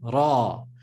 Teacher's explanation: it's important here in Arabic that you pronounce and roll the R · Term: rolling R